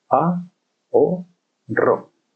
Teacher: Se separan la A y la O porque es un hiato.